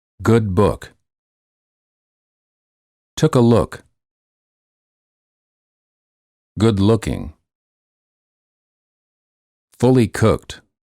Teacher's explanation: The lips are very rounded and the tongue is relaxed.